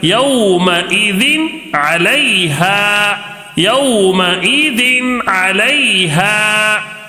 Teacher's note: نون کو ظاہر کر کے بغیر غنہ کے جلدی پڑھیں گے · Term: اظہار